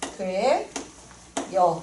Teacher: 쓸 때는 어였는데 발음할 때 어는 그대로 있는데 반모음 얘가 첨가됐지. 이게 반모음 첨가야.